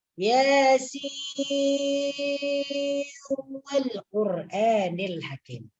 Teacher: Ini apabila dibaca idgham. Sinnya dimasukkan ke dalam huruf waw karena nun mati bertemu dengan waw.